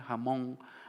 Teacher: como la velarización de la N final